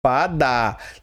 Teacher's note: Lâmpada está aqui na antepenúltima sílaba forte. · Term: proparoxítona